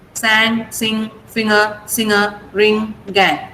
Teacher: G sound is not there in this. Only ng sound is there. Ng. That's a nasal sound.